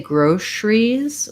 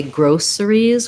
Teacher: some people say groceries with um the sh sound and some say groceries with the s sound